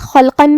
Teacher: قاف کی ادائیگی زبان کے جڑ اور تالو کے نرم حصے سے ہے. قاف حروف التفخیم میں سے بھی ہے تو ہمیں اسے بھاری آواز میں پڑھنا ہے، جو کہ اس پہ تنوین زبر ہے. · حرف الخاء کو ہم بھاری آواز میں ادا کریں گے اور اسے حلق کے اوپر والے حصے سے پڑھیں گے. پھر یہاں لام ہے اور اس پہ جزم ہے تو ہمیں لام کو ظاہر کرنا ہے.